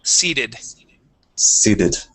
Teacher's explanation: Give me a good E, long E sound here in the middle.